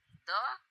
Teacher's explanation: जब द बोला तो जिह्वा का अग्रभाग दांत पे स्पर्श हुआ